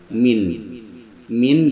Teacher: makhorijul huruf yaitu tempat keluarnya huruf hijaiah di sini ada Min tempat keluarnya huruf Min itu safatain yaitu dua bibir yang mana bibir bawah dan atas disentuhkan